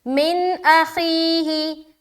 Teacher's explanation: نون ساکن اس کے بعد حمزہ آ رہا ہے تو اظہار کریں گے · خی میں یا مدہ کر رہے ہیں، ہی کو جلد ادا کریں گے